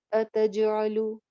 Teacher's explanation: قولو اتجعلو آ نہیں کہنا آ نہیں اتجعلو تج جیم پہ کلکلا ہو رہا ہے آواز باؤنس بیک کریں گے